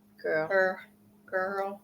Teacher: whenever I say girl I elongate the r because I have to physically move my